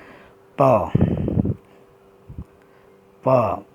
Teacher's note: प, प ये पाँचवें लाइन का वर्ण है और पाँचवें नंबर पे जो है ओ, कत मद ओ है, तो ओष्ठ हो, प का उच्चारण स्थान ओष्ठ हो जाएगा